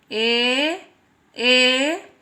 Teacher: छोटा ए और बड़ा ए, इन दोनों का कंठ और तालु का प्रयोग होगा।